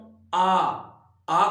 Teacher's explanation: आ करने पर मुख सबसे ज्यादा खुल रहा है इसलिए किसम आ जाएगा ये विवृत में आ जाएगा इसके बाद